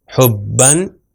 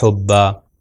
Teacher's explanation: پھر بے آیا ہمارے پاس، تو بے کے اوپر جو ہے شدہ بھی ہے اور یہاں پر تنوین دو زبر بھی ہے. تو اگر کنٹینیو کریں گے تو ہو جائے گا حبن، اگر رکیں گے تو ہو جائے گا حبا